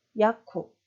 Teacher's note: 네, 이때도 마지막 자음 무가 브 발음이 아닌 프 발음으로 나는 거죠. 그래서 우리나라 말로는 그냥 받침 비읍으로 발음하셔도 되고 살짝 입술을 떨어뜨리시면 됩니다